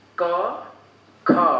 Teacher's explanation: क के तुलना में ख में ज़्यादा मुख से हवा निकली है। क्योंकि हम पढ़ रहे हैं यहाँ पे अभी अल्प प्राण देख रहे हैं, तो हम देखेंगे कि क में, क का उच्चारण करने में मुंह से कम हवा निकली है, तो क हो गया अल्प प्राण।